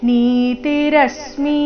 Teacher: ಮಿರಸ್ವ ಬರಬೇಕು ಅದನ್ನ ದೀರ್ಘ ಮಾಡಬಾರದು